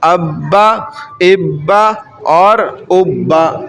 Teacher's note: سختی کے ساتھ ذرا رک کر اس کو پڑھتے ہیں ہم